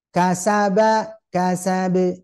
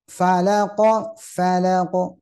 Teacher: harus terdengar ya kekuatan pantulannya sama dengan vokal ya Jadi enggak boleh disembunyikan gitu Ya namanya juga qqala yang memantulkan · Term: qalqala